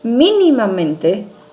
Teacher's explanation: o mi é a nossa sílaba tônica. Então, ele vem antes da antepenúltima, ele é classificado como uma sobresdrújula.